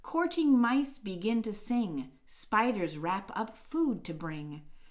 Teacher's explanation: there are four stressed beats in each line so there are four trochees in every single line